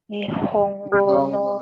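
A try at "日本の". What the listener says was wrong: Bukan Nihongo ya, Jepang. Nggak pakai go. Jepang saja.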